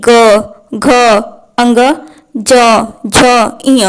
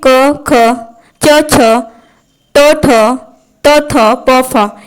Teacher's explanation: अघोष वर्ण उसे कहते हैं जिनको उच्चारण के समय प्रकंपन या कंपन उत्पन्न नहीं होता है। जैसे में क, ख, च, छ, ट, ठ, त, थ, प, फ, ये सब बोलने में कंपन उत्पन्न नहीं होता है, इसलिए ये अघोष वर्ण कहलाते हैं। · सघोष वर्ण कहते हैं, वो कहलाते हैं और इनको बोलने में प्रकंपन उत्पन्न होता है